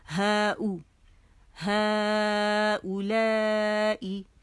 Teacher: ہا کے اوپر زبر اور مد کا نشان اور او الگ, اور یہ واو جو ہے نا حرف علت ہے, پڑھا نہیں جاتا